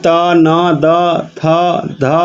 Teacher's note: दंत नहीं है आपका ट और वही त, न, द, थ, ध ये दंत है